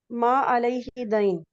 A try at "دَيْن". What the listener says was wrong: یہ دین ہے، قرض ہے، ٹھیک ہے، دین نہیں ہے، وہ زیر نہیں ہے اس کے نیچے.